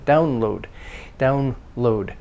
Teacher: means stress on the first part because it's a compound